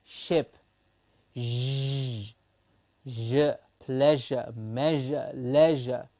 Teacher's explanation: the tip or blade of the tongue is the active articulator and the teeth ridge is the passive articulator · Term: palato-alveolar sounds